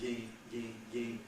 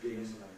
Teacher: instead of vowel plus nasal, I'm doing a nasalized vowel.